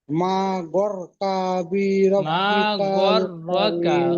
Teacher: গয়নটি রর সাথে যুক্ত হবে, গর হবে, গয় হবে না।